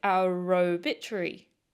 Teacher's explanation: But where is that initial R sound coming from? It's a result of connected speech. Our obituary can sound more like our obituary.